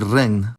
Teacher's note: the digraph gn results in the interesting cluster of [ŋn], like in the word regn.